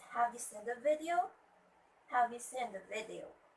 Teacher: the video should be on the falling rising intonation because this is a question